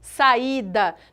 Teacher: fortes As duas são vogais eu não tenho nenhuma semivogal aqui o i ele é pronunciado com tanta intensidade quanto eu pronuncio o a Ok saída nesse caso duas fortes não podem ficar juntas eu